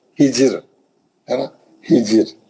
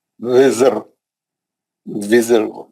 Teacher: जेर आने से रा जो है बारीक हो जाती